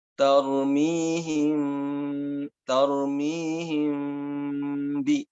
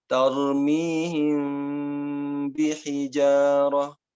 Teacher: Tidak langsung tarmihim, tapi ditahan dulu, tidak sampai nempel, kemudian ketika mengucapkan ba, baru ditempelkan. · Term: ikhfa